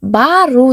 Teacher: а дыбысы жуан дыбысты болғандықтан, қасындағы у дыбысы да жуан дыбыс болып саналады екен